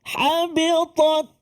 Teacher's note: Ta tu dia sukun. Kan dia ada satu sifat dia antaranya iaitulah hamas. Mana terlepas nafas kita. Tapi sikit, jangan banyak.